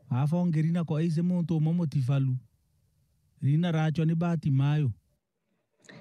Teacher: I can't hear any initial e on the word Reena